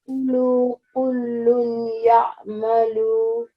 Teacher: you're going to give the emphasis to lam as well as ya, and in between that you have to keep the ghunna sound as well